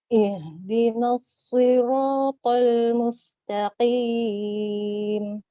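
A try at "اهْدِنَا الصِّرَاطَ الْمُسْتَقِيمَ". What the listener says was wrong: Masya Allah. Tinggal latih terus ya ya untuk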